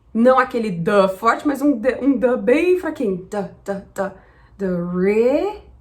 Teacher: A primeira dica é para a pronúncia da primeira sílaba, que normalmente em português a gente fala do. Mas em inglês, como ela não é uma sílaba forte, ela é uma sílaba fraca, a gente vai falar d. Não aquele d forte, mas um d bem fraquinho